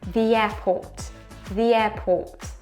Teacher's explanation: we're going to look for the closest consonant to e from the, and that is y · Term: small y